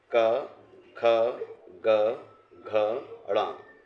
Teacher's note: ये कंठ ध्वनि में आते हैं